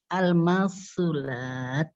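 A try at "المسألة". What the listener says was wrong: Tapi taknya bisa nggak dikasih hamsnya?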